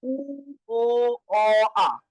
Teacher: উ বললে উপরে থাকে, এটা হচ্ছে উচ্চ। ও বললে একটু নিচে এটা হচ্ছে উচ্চ মধ্য, অ বললে আরেকটু নিচে এটা হচ্ছে কি নিম্ন মধ্য, আর আ বললে একদম নিচে এটা হচ্ছে নিম্ন।